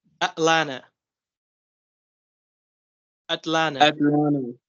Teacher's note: we're going to eliminate the pronunciation of the T sound